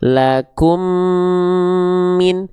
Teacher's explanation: Nah, itu sama dengan teman-teman sedang mentasydidkan huruf mim yang kedua. Mim yang pertama dileburkan ke huruf mim yang kedua, maka ditahan dua harakat. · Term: Idghum